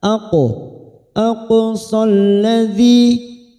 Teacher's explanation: Ilal masjidil, masjidil lam ta'rif lagi yang bersukun idhar qamariyah. Jidil aqo ada qalqalah pada huruf qaf sukun yang mati asli di tengah kalimat kita pantulkan